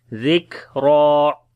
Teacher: جب زال کو کاف کے ساتھ ملائیں گے صفت شدت اور ہمس دونوں آئے گی، اور را کو موٹا پڑھیں گے